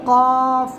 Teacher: ज़बान की जड़ ऊपर का तालु से मिलकर कॉफ अदा होता है।